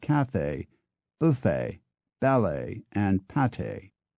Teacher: putting a clear first syllable stress on cafe buffet ballet and Pate